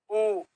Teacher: उ बोलेंगे तो होट गोल हो रहे हैं